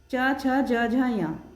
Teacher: इसमें इनका उच्चारण स्थान तालु से होता है। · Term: च वर्ग